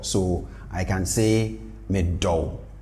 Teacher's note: If you bring the tone down, you get the verb do